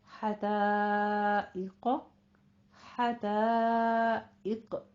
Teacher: इक में आपने आइन नहीं बना देना, आइका नहीं कहना है, इक कौफ को पुर पढ़ना है। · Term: हमजा की आवाज